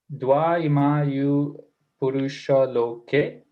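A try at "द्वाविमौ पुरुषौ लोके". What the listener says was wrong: Estás poniéndole una I al final. adding an extra I. Imaui. Imau.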